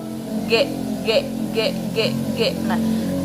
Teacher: belakang lidah dan langit-langit lunak nah dalam sifatnya itu invijariun artinya Udara yang dikeluarkan itu secara terhambat penuh ya dan bunyi yang dikeluarkan itu disertai dengan getaran gitu ya g g g kalau dipegang ini pita suara kita · berarti keluar dari belakang lidah dan langit-langit lunak nah dalam sifatnya itu invijariun artinya Udara yang dikeluarkan itu secara